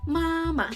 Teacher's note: The second ma is neutral, not high, not low, just light.